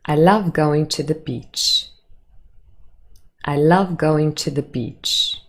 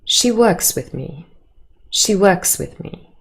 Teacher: Hopefully you were able to hear that all of those statements have a falling intonation at the end